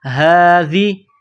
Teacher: ذال کو نرم کرنا ہے، زبان کا سرہ تھوڑا سا باہر نکالیں گے ذال کو پڑھتے وقت